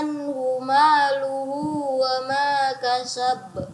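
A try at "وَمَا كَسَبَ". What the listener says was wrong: Ya, kasab. Tidak ditahan lagi. Kasab. Tidak itu, seperti itu, tapi kasab.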